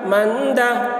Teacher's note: یتیمن فآوا، من دخلہ، میم نون زبر من، دال زبر دا، من دا، نون ساکن کے بعد حروف اخفا میں سے دال آ رہا ہے، اس لیے نون کی آواز کو ناک میں چھپا کر پڑھیں گے، اس کو اخفا کہتے ہیں۔